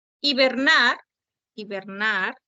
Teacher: Hibernar, hibernar se acentúa en la última sílaba.